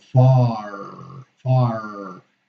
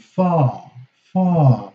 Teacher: And in the UK, the same R is silent